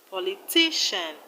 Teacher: All of them have their stress on the second syllable from the end. In politician, we have the stress on ti.